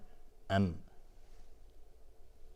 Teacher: میم محل تلفظ شفه هست، از لب تلفظ میشه